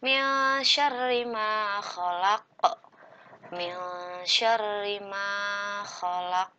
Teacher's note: Nah, di sini disebut dengan ikhfa, harus disamakan atau didengungkan dan nun sukunnya berubah menjadi eng.